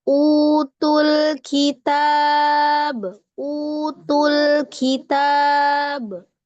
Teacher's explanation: Ya, lamnya ya Mi. Diringankan lagi lamnya ya. Jangan ketekan.